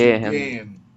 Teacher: O H não é pronunciado, tá?